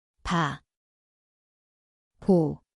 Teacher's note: Ang lugar ay parehong labi.